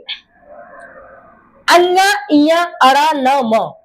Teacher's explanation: मुंह और नाक दोनों से बोले जाते हैं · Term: अनुनासिक वर्ण